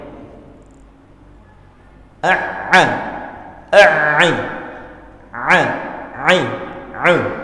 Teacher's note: A'u. Ya, sebenarnya karakter huruf ain adalah lembut ya, setengah lembut, agak lembut atau tawassut. Jadi tidak boleh dia dijaharkan atau disyiddahkan. Tidak boleh dia terlalu kuat.